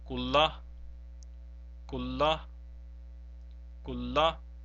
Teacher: So please see that we have not pronounced the noon at all. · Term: idgham-e-tam